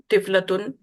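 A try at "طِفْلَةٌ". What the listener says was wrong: हम्म ये तिफलाता गोलता पे जो जबर है ये मिस्टेक है, ये तिफलातुन है।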